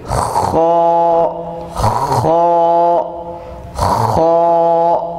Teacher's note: یہ خا جو ہے خراٹے یا خراش کی سی آواز اس میں پیدا ہوتی ہے، اور یہ حرف موٹا ہے اس لیے آپ کا چہرہ جو ہے تھوڑا غصے میں دکھائی دینا چاہیے۔